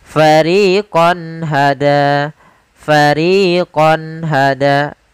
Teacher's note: Pada kata fariqon hada di sini ada fathatain atau tanwin bertemu dengan ha. Maka suara qonnya harus jelas, tidak boleh ditahan dengan gunah. Karena izhar adalah menjelaskan, menampakkan suara nun sukun dan tanwin dengan jelas tanpa disertai ghunah.